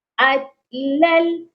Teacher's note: ادھر آپ دیکھیں لام کو لام کے ساتھ ملایا گیا ہے. لام کی تنوین کو جب لام کے ساتھ ملائیں گے تو صرف ملانا ہے، ادغام ہوگا اور غنہ نہیں ہوگا